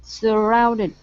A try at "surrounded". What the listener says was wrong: Give me the N and the D there. Okay. Towards the end of the word. Surrounded. Surrounded.